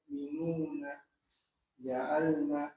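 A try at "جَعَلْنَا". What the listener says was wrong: Nunnya kurang panjang. Nah, di nun di ja'alnanya dipanjangkan.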